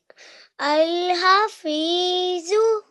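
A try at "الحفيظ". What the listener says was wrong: Just try to read the ha a bit more from your throat. Ha.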